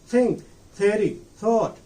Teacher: There is no vibration. The tip of our tongue goes up and reaches very nearer to our upper teeth. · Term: dental fricative